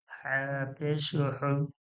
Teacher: হা এটা হা পেশ হু ছোট করে পাতলা করে আর এটা গলার মাঝখান থেকে মোটা চেপে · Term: বড় হা